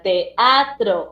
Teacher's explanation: una vocal abierta, la E separándose de otra vocal abierta, la A